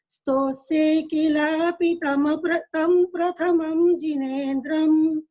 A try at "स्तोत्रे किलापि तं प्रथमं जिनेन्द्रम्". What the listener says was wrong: वो आप थोड़ा जल्दी बोल रही ना तो अक्षर कम हो रहे हैं।